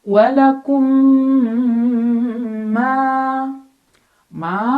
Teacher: mim sukun dimasukkan atau dileburkan ke mim kedua sambil dengung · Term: idgam Mimi